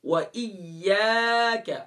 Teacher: و ایاک الف مدہ ایک الف کی مقدار کھینچیں گے.